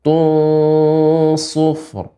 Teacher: ini tun bertemu dengan shad merupakan huruf istilla shad. Jadi ikhfanya tebal